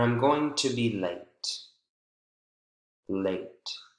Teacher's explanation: the intonation really falls at the end of the sentence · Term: falling intonation